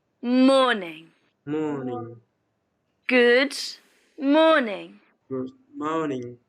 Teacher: the stress on morning is on the first syllable